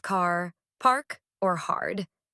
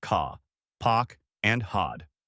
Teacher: >> In contrast, standard British accents are mostly non-rodic. The R sound gets dropped unless it's followed by a vowel. So those same words car, park, hard sound more like ca, pock, and hod.